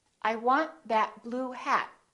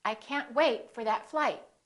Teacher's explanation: hold the final stop by either holding your tongue for the T or the D